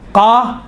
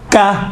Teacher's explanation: قاف اور کاف میں دیکھیں دونوں کا تلفظ ایک ہی ہے، فقط یہ ہے کہ جو زبان کی جڑ ہے، زبان کی جڑ سے قاف نکلتا ہے، اور زبان کی جڑ اگر نرم والی جگہ، اوپر والی نرم والی جگہ سے جب ٹچ ہوتی ہیں تو قاف نکلتا ہے، سخت والی جگہ سے ٹچ ہوتی ہیں زبان کی جڑ تو کاف نکلتا ہے